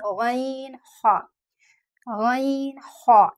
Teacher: गले के ऊपरी हिस्से से जो कि हलक से जुड़ा है, तो इन हुरूफ की अदायगी हलक से होगी